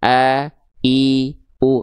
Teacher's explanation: Kalau dia dilafalkan dari sini, maka yang keluar adalah huruf hamzah. Hamzah itu dilafalkan dari pangkal tenggorokan.